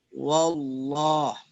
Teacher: Jadi bunyinya bukan wo ya, tapi wa. Tapi lo-nya tebal.